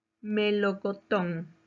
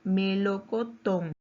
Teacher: su mayor fuerza de voz está en la última sílaba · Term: palabra aguda